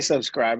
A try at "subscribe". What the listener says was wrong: You like slowed it down, man. You're like subscribe.